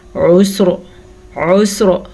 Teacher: را کو پر کر کے ساکن کرنا ہے اور سین کا ساکن بھی ہم نے پڑھنا ہے